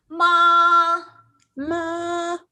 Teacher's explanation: The first tone, keep the high pitch for that first tone.